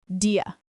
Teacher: Do you is a very fast reduction of do you. It almost sounds like one syllable, dia.